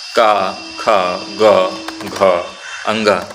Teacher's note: क वर्ग का जो है सभी वर्णों का उच्चारण स्थान क ख ग घ अंग सभी का उच्चारण जो है उच्चारण स्थान क्या होगा? कंठ होता है।